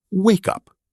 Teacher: We say wake up. The K sound flows smoothly into the U.